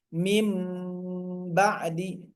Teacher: Mim tahan dulu mimnya ya. Mim ba'di ditulisnya min harus dibacanya pakai huruf M bukan N ya. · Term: iqlab